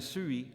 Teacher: The diphthong ui, as in sui, I am, and lui, him, is pronounced with the front rounded vowel of tu, followed by yod.